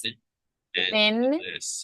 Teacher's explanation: dental sounds. So your tongue is near or between your upper and lower teeth.